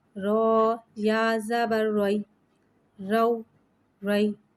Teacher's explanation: رو کو ایک الف یعنی 2 حرکات کے برابر کھینچ کے پڑھیں گے۔ رو پہ زبر آ رہا ہے، لہذا یہاں رو کو موٹا پڑھیں گے